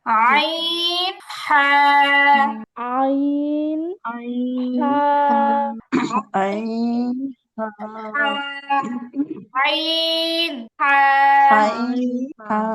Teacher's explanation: আইন, হা। এই 2টা হরফই উচ্চারণ করার সময় গলার মাঝ বরাবর চাপ লাগবে।